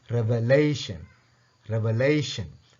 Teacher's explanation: லே என்று வாரத்தை தான் நாங்கள் என்ன செய்யணும்? ஸ்ட்ரெஸ் பண்ணணும்